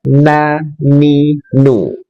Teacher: Nun ujung lidah dengan gusi dua gigi seri atas.